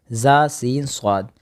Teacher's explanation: ان 3 حروف زا سین صاد کو ادا کرتے وقت شیٹی کی طرح تیز آواز نکلتی ہے، اس لیے ان حروف کو حروف صفیریہ یعنی شیٹی والے حرف بھی کہا جاتا ہے۔